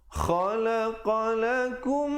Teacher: Di situ idgham mislain, mim mati bertemu mim, dengungkan 2 harakat.